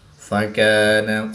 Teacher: الف سے پہلے کاف باریک ہے تو الف بھی یہاں پر باریک ہی پڑھا جائے گا